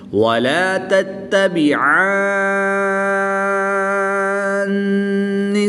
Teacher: تو اس میں عین کو لمبا کریں گے، مد کریں گے، 3 سے 5 الف تک کھینچ کر پڑھیں گے اور غنہ بھی کریں گے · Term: مد لازم